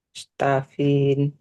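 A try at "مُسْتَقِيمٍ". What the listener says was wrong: enggak mustafin mustaqim pakai qof.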